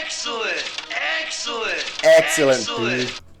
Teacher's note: You can hear that in a clip here when they say excellent, that's a lower dress vowel.